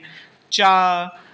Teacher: चा तो तालु से। देखिए चा जिह्वा कहाँ टच हो रही है, तालु में स्पर्श हो रही है। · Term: तालव्य व्यंजन